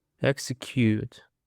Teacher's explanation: It is of three syllables and the stress is on the first syllable.